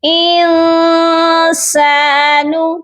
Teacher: نون ساکن پر ہم چھپا ہوا غنہ کریں گے، اپنی آواز کو ناک میں چھپا کر پڑھیں گے